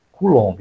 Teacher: A pronúncia certa é Coulomb, no LOM, a sílaba tônica.